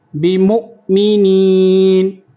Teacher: میم ساکن کے بعد با آ جائے گا تو غنہ ہوگا، تو وما ہم یہاں پر غنہ کریں گے.